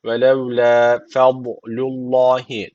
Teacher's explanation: Ve levla fadlullahi derken Allah lafzı burada kalın okunacak. Çünkü öncesindeki harfin harekesi üstte. Yani Allah lafzına üstten giriş yapılıyor.